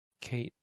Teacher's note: It's skate with no aspiration. But when you say Kate, you generally aspirate it.